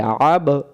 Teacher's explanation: পরের শব্দ আইন জবর আ, আ মিলবে বায়ের সাথে, আব বা অক্ষরে সাকিন থাকলে কলকলা করতে হয়